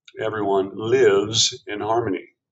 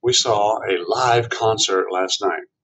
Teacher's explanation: This definition of live has a short I vowel, short. But if you say live with a long I, it changes the meaning